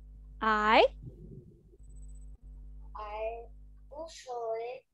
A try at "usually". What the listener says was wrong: Okay, remember, not you sure, mà là usual, not sure.